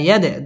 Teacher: দাল কলকলার হরফ ধাক্কা দিয়ে পড়তে হবে